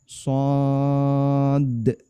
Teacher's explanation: Dalnya mati. Sehingga karena dal mati maka dia qalqalah dan dia berada di ujung maka dia qalqalah kubro.